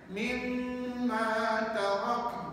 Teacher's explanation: bunyi n tu jangan lama, sebab dia bukan nun satu, dia nun mati. Jangan sampai tarak dua harakat pula kat situ bapa, jangan bunyi gitu ya.